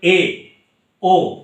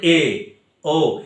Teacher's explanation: স্বরধ্বনি এলাকার উচ্চ অবস্থা থেকে 1/3 অংশ নিম্নে অবস্থান করে এবং নিচ থেকে বাকি অংশটা বায়ু দ্বারা পূর্ণ থাকে, তখন তাকে অর্ধ সংবৃত বলে।